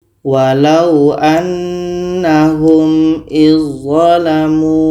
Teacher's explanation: Kita baca walau annahum izzalamu. Bunyi dzal sudah sempurna masuk ke dha. Dzal tidak kita baca lagi. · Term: idgham kamil